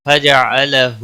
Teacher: ہو اس کے اوپر الٹا پیش ہے، ایک الف کے برابر کھینچ کر پڑھیں گے